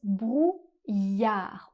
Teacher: dans le mot brouillard, on ne prononce pas le D final. Comme très souvent en français, on ne prononce pas la dernière consonne du mot.